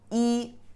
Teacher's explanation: when it's pronounced alone is e is first tone e or at the end of a word you pronounce it also e the first tone however if you put the e in front of another character